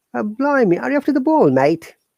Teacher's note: this is the way they talk they don't pronounce r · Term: cockney accent